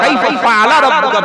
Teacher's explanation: এই ফাটা দুই ঠোঁটের মাঝখানে উচ্চারণ